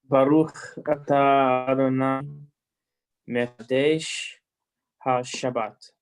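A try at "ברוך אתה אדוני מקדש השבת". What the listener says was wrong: Okay, excellent.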